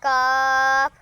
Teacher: জিহ্বার গোড়া তার বরাবর উপরের তালুর সঙ্গে লাগাইয়া